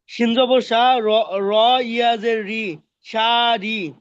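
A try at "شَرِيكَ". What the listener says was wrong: ভাই আবার তো টান হয়ে গেল ভাই, আবার টান হয়ে গেছে।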